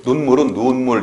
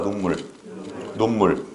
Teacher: 예외적으로 유성음이 와도 짧게 나는 소리들이 있다고, 이 눈물처럼.